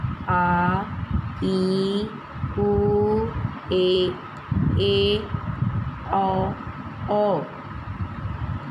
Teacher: जिस स्वर के उच्चारण में ह्रस्व स्वर से दुगना समय लगता है उसे दीर्घ स्वर कहते हैं।